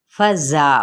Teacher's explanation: फ़ा की हरकत को लंबा नहीं करेंगे, ज़ा मद्देसली बिल अलिफ का कायदा हो रहा है, एक अलिफ या 2 हरकत के बराबर, और दा जो सा इसकी हरकत को भी लंबा नहीं करेंगे।